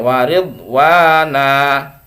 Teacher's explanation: tapi jangan terlalu panjang ya waridwana segitu jangan waridwana jangan ya jadi satu Alif saja atau dua harakat atau satu ayunan saja